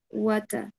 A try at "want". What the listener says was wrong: wata, pero si la T la eliminaste.